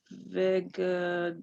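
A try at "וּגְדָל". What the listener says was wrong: Now this is a u.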